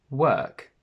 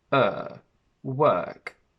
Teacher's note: the long sound er where technically your mouth is slightly open the center of the tongue goes up and your lips are flat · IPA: /ɜ:/